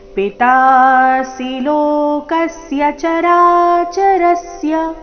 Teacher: ಲೋಕಸ್ಯ ಕ ಮೇಲೆ ಆಘಾತ, ಚರಾಚರಸ್ಯ ರ ಮೇಲೆ ಆಘಾತ.